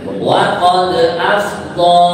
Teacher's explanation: nah ini dalnya cukup kita qalqalkan, ya